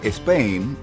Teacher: sp is just not possible at the beginning of Spanish words